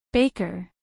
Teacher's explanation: Baker dos sílabas Baker acentuación en la primera sílaba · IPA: ˈbeɪkər